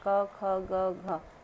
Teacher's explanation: क ख ग घ, ये कंठ से निकलने वाले हैं